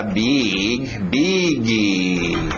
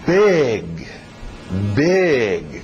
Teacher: Vamos com o I aberto, som de E.